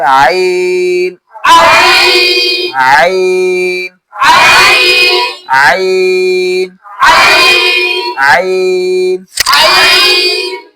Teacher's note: হলকের মাঝখান থেকে আনতে হবে